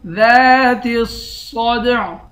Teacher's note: تا کو صاد سے ملا کر صاد کو موٹا پڑھیں گے، صاد کو دال سے ملائیں گے، دال پر قلقلہ کریں گے